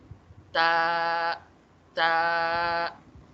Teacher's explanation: یہ جو زبان کی آپ کی نوک ہے نا یہ نیچے والے دانتوں کے اوپر والے جو آپ کے دانت ہیں فرنٹ ٹیتھ جو آپ کے ہیں ان کی بیک سائڈ پہ ٹچ ہوگی آپ کی زبان تو آپ کا تا ادا ہوگا.